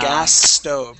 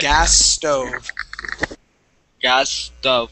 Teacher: So actually what we want to do is combine the S sounds. So we don't want to pronounce two S's. We want to pronounce one S